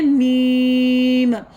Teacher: मीम में हम क्या करेंगे कि मीम में हमने अपने होठों को मुकम्मल बंद करना है, तो अदा करना है मीम। मीम पढ़ते हुए आवाज़ नोज़ में से आएगी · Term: गुन्ना